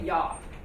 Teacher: we don't pronounce the G here at the end of yog but we say y